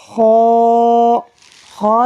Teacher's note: خا جو ہے یہ حلق کے اوپر والے حصے سے ادا ہوتا ہے۔ اس کو پڑھتے ہوئے بھی آپ کو تھوڑا کھانسی فیل ہوگی، مگر یہ ہا کے اوپر والا مخرج ہے، حلق سے اوپر والا جو حصہ ہے وہ خا کا مخرج یعنی خا وہاں سے ادا ہوگا.